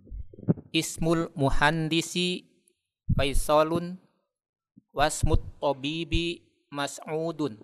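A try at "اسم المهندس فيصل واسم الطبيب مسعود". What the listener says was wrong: Nah, Masya Allah. Qiraa'ah mumtazah.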